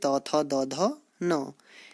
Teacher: इन्हें दंत्य भी कहा जाता है क्योंकि इनके उच्चारण में जो आपके दंत्य यानी कि जो दांत होते हैं उनकी सहायता से ये बोले जाते हैं, क्योंकि इनमें आपकी जो जीभ है वह दांतों से स्पर्श करती है